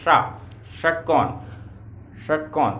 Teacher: मूर्धा में जीभ आपकी टकराई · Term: मूर्धन्य शा